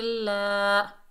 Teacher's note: ضاد کے اوپر زبر بغیر کھینچے پڑھیں گے، ضاد حروف استعلا میں سے ہے، موٹا ادا ہوگا ضا۔ لام کے اوپر کھڑا زبر، ایک الف کی مقدار کھینچ کر پڑھیں گے